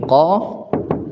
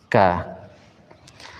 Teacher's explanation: posisi lidahnya Q itu dia menaikkan aqsal lisan